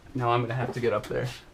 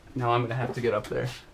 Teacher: Eu falei I'm gonna have to, que é o modo informal e rápido de falar I am going to have to. Muita contração e som do schwa.